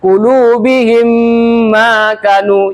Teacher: cara membaca idgham mimi yaitu dengan menyuarakan mim rangkap atau ditasdidkan menjadi dibacakan dengung. Didengungkan mim.